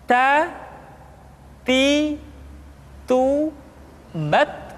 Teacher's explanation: ujung lidah kita dengan gusi-gusi gigi seri bagian atas ta kemudian huruf ta ketika diucapkan terdengar ada nafas yang mengalir atau dalam ilmu tajwid disebut dengan sifat alhamas perhatikan ta ti